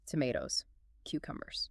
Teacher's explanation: The rising intonation signals to the other person that a choice or a response is required.